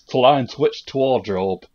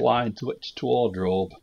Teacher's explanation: It's like they don't say th sounds. So like in it's t.